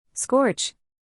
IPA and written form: skɔrtʃ (Scorch)